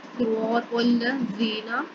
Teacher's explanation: یعنی کہ ہم لوگ اپنی جو زبان ہے اس کو اوپر والے دانتوں کے اندرونی کنارے سے ملائیں گے. صراط الذین، زال یا زی، اس کے علاوہ یہاں پر یا مدہ ہو رہی ہے، تھوڑا سا لمبا کریں گے زی کو، اور نون زبر نہ صرف اور صرف اس کو تیزی سے ادا کریں گے.